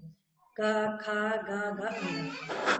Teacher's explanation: कंठ से। ठीक है, हवा जो है कंठ को छूते हुए बाहर निकल रही है